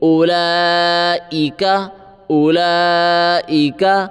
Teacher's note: واو نہیں پڑھیں گے صرف حمزہ پڑھیں گے حمزہ کے اوپر پیش ہے حمزہ پیش او لام کھڑا مد